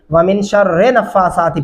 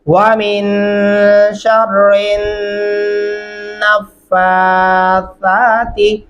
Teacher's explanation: شین کو را کے ساتھ، پھر را کو اٹھا کے ہم نے نون کے ساتھ ملانا ہے